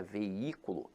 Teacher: a palavra veículo, apesar de ter hiato, veja que a sílaba tônica se encontra na antepenúltima sílaba. Então aqui ela é acentuada pela regra da proparoxítona.